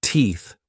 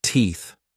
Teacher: said teeth with an F not teeth with a th